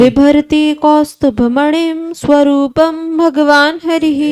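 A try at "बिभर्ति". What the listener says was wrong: ऐसे भी नहीं, अब ब होना चाहिए।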